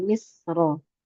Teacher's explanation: Karena ro-nya fathah. Ketika wasol dibaca dong, fathahnya jadilah dia tebal